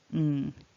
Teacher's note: there's a little click inside your mouth as the tongue releases, but you don't go all the way down to making a g, so it's not a g. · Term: ng sound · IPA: /ŋ/